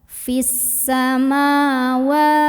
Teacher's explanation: Wa mad tabi'i karena ada huruf waw yang berbaris fathah berdiri, maka dibaca panjang 2 harokat.